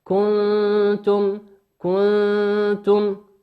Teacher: النون في كنتم نون ساكنة أتى بعدها حرف التاء، والتاء من حروف الإخفاء